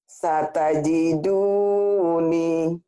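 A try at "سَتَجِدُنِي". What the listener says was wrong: Pendek-pendek.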